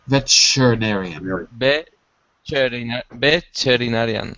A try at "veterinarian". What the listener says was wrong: Wait a second, you're adding an extra syllable.